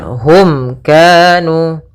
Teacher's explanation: Kemudian hum kanu pada lafal mim bertemu dengan kaf, ini kita namakan dengan izhar syafawi, yaitu suara mimnya harus dengan jelas, tidak boleh ditahan